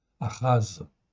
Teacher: Donc le prime H, en fait, ici, c'est une symbolique pour dire que c'est un H qui se prononce presque comme un R. C'est guttural, ça vient du fond de la gorge.